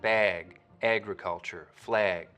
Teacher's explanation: Up over the border in Vancouver, you'll hear that same lot rounding, but you'll also start to get raising and tensing in the trap vowel when it comes right before a g sound, like in bag, agriculture, flag, similar to what you can hear over in Minnesota.